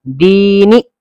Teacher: بچے یہاں پر یہ غلطی کرتے ہیں کہ دال یا زیر دی کو کھینچ دیتے ہیں اور نون یا زیر نی کو کھینچتے نہیں ہیں